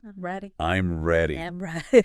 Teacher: Hear how my voice went down at the end? · your voice usually goes down at the end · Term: intonation